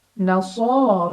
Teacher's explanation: ada Shad berbaris fathah berdiri cara bacanya dipanjangkan dua harakat nasor ro dibaca secara tafkhim karena ada Ro berbaris di atas jadi bacanya tebal